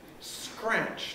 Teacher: in scratch you can see it follows logically that the r is in principle voiced